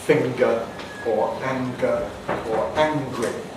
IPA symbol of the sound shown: ŋg